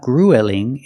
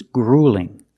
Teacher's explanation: use the long u plus the light L